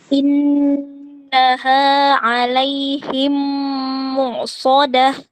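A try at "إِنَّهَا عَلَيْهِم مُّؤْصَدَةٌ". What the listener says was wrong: Oke, hamzah itu disukun dengan syiddah. Tidak ada aliran suara ya. Jadi langsung innaha alaihim mu'sadah, jangan dia bukan bainiyah. Langsung diputus aliran suaranya.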